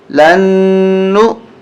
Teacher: لام نون زبر لن, نون حمزہ پیش نو, یہاں غنہ ہوگا, نون مشدد ہے